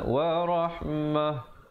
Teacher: Baik, situ kalau sahabat-sahabat pilih untuk waqaf, ta marbutahnya itu diberikan mati mendatang, jadi rahmah ditukarkan kepada ha